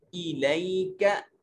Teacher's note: ये काफ बरीक है, इसको बरीक करके पढ़ेंगे